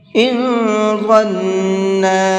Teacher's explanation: ظن کے نون کے اندر غنہ کریں گے، تھوڑی دیر آواز کو ناک میں روک کر کے پڑھیں گے · ان کے نون کے اندر اخفا کریں گے، تھوڑا سا ناک میں آواز کو چھپا کر کے پڑھیں گے